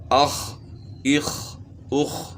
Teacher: تو معلوم ہو گیا کہ ہا اپنے مخرج سے ادا ہو رہی ہے۔ اس طرح خا جو ہے ادنی حلق سے ادا ہوتی ہے، یعنی گلے کے شروع سے